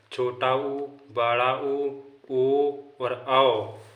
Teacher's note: दूसरा होता है वृत्तमुखी। जिन स्वर के उच्चारण में ओंठ वृत्तमुखी या गोलाकार होते हैं उन्हें वृत्तमुखी स्वर कहते हैं